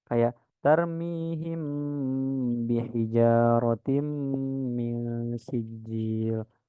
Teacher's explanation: cara membacanya harus disuarakan samar-samar di bibir dan didengungkan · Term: Ik sfawi